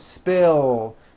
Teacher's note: Spill ends with a voiced L sound.